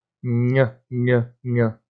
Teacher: para falar né bebé e o nh que é para tal você sobe a língua lá no palato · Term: palatal